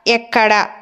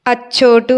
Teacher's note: సంధి కార్యం జరిగినప్పుడు ఆ త్రికంబుకి ఏదైతే దీర్ఘం ఉందో అది హ్రస్వంగా మారుతుంది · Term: త్రిక సంధి